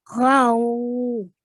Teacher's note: Okay, then the fatha is going to join, the ghain with the fatha is going to join onto the waw really softly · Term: waw with the sukoon